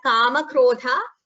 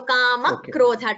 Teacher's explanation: A slight k is heard before krodha. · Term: double sound